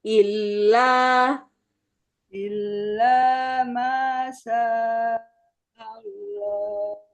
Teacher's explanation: Ilahnya jangan ditahan terlalu lama, Bu.